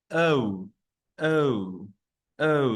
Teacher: That's the schwa and U, schwa and U gliding.